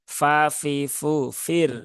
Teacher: gigi seri atas bertemu bibir bawah tetapi yang bagian dalam